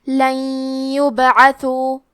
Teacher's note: یا حروف الادغام بغنہ میں سے ہے تو ہم نون ساکن کو یا میں ملا کے غنہ اور تشدید کے ساتھ یہ حکم کو ادا کریں گے